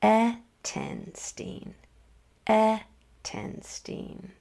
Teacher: Accent means just said with a little bit more emphasis, a little bit more intention at that first part of the word · Did you notice that I accented the first syllable?